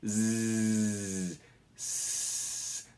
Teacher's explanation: two sets of sounds that are exactly the same in every way except for in voicing